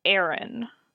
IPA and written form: e͡əɹɪn (Erin)